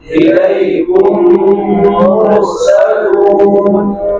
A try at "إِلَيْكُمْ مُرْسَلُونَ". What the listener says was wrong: مرو نہیں مرسلون لہم ما یشاءون